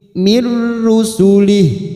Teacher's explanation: idgham bila guna hanya masuk tanpa mendengung, tanpa ditekan lama-lama